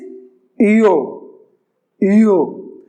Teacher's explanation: you will round your lips and pronounce E, German E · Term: umlaut O